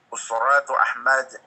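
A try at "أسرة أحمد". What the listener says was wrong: Ra'nya pendek. Ra'nya pendek.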